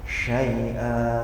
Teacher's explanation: Sumber desisnya dari tengah lidah.